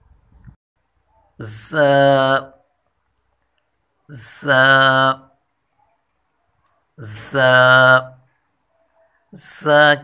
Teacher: زبان کی نوک جب ثنایا سفلا یعنی نیچے کے دو دانتوں کے کنارے سے ٹکرانے کے ساتھ ساتھ اوپر کے دو دانتوں سے لگے تو یہ حرف ادا ہوتا ہے۔ اور ز حرف سیٹی والا یعنی تیزی والا حرف ہے، اس میں تیزی سے پڑھیں گے اس کو۔